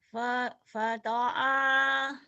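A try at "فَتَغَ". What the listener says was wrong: ada titiknya bukan ain. Fatogo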